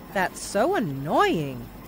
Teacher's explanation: he stresses the noy part of the word in annoying.